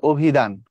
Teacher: শব্দের প্রথমের অ সংবৃত হয়ে যায়, অভিধান হয়ে যাবে অভিধান।